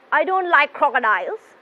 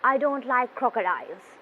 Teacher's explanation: your voice is going down towards the end of the sentence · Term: falling intonation